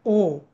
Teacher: ओ आणि औ साठी मला कंठ पण लागतो आणि ओठ पण लागतात ओ ओठ ओठ हलवल्याशिवाय ओठाचा चंबू केल्याशिवाय किंवा चा योग्य उच्चार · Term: कंठोषठम